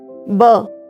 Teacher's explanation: जब हम ब का उच्चारण करते हैं तो हमारे दोनों होठ आपस में टकराते हैं